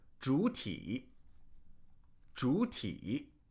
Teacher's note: So that first third tone, we just truncate the first part of it, right? And we just make it a rising tone into another third tone.